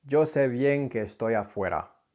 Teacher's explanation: So in this case, when he says que estoy afuera, he merges that que and that estoy into one longer word